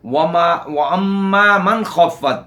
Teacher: میم مشدد ہے، اس میں ایک الف کے برابر غنہ زمانی ہوگا. · من خفت، نون ساکن کے بعد حروف حلقی میں سے خو ہے، یہاں اظہار حلقی ہوگا، یعنی نون کو بغیر غنہ زمانی کے، غنہ کے بغیر پڑھیں گے.